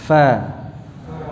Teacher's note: fa-nya diucapkan dengan ee mengalirkan nafasnya